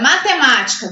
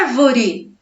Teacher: palavras proparoxítonas que é a antepenúltima sílaba é a mais forte a sílaba tônica está na antepenúltima sílaba